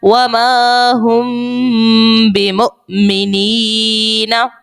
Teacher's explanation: میم ساکن کے بعد با اخفاء شفوی کا قاعدہ لگائیں گے اور غنہ کریں گے